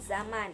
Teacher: Yang ke-12 bunyi Z. Ciri-cirinya hidup, oral, apikoalveolar, frikatif. Contoh katanya zaman.